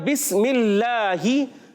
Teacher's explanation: और यहाँ बिस्मिल्लाही, अल्लाह के लाम, अल्लाह पाक के लाम से पहले ज़ेर है, इसलिए यहाँ बारीक होगा